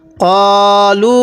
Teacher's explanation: কফের মধ্যে টান দিছি, লামের মধ্যে আবার 3 আলিফ টান দিছি।